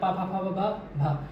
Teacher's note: और पा वर्ग जितने होंगे ओष्ठ से बोले जाएंगे